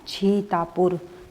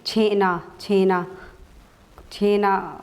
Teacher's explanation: छत्तीसगढ़ी जो उपबोली है उसके अंतर्गत हमें स के स्थान पर छ का प्रयोग देखने को मिलता है